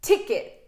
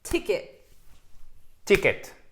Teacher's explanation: l'accent tonique est sur la première syllabe. Première syllabe.